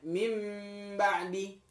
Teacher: ketika iklab dibaca iklab, maka bibir ini rapat semuanya. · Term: iqlab